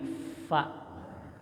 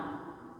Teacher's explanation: Fa, bibir bawah menyentuh gigi atas mengeluarkan angin.